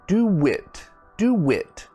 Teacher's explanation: so you see my mouth is actually making a w sound